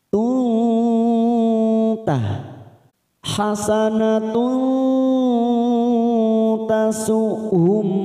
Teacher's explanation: idhar sfawi hasanat ada Ta marbutah di sini yang berharakat dumat tanwin bertemu dengan ta namanya Ikfa Hakiki kita samarkan tiga ketuk